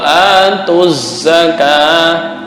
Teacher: tanda fathah ditambah ukurannya satu alif. Wawu jangan dibaca, bukan zakawah.